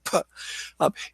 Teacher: the P is aspirated in English